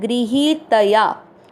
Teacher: ग्री के बाद में ही जो है वो बड़ी मात्रा है, लंबा खींचना है।